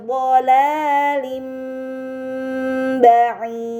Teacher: Ini dinamakan iklab, maka harokat kasrah tain dibaca mim dengan gunnah yang dipanjangkan